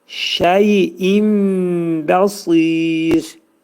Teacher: İqlab olacaq. Nun hərfi bəyə yetişdikdə mim hərfinə çevrilir.